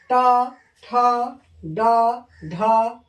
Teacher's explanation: ट ठ ड ढ अर टवर्ग, ये मुर्दा से बोला जाता है।